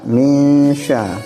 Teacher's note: Jadi cara bacanya min ini ada dengungan sebelum berlanjut ke sya, min sya, jadi ada dengung.